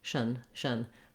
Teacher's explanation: you just want to go as quickly as you can from your sh to your n Sound shun shun very light and very reduced vowel you may also · I wrote it here with letter U because, again, it could be a little bit of a schwa sound, even a little bit of an I sound, constitution, constitution. You just want to go as quickly as you can from your SH to your N sound